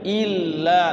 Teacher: illa disukunkan dulu, kemudian bunyikan lamnya yang kedua. Jangan sampai ila gitu kan. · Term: tasydid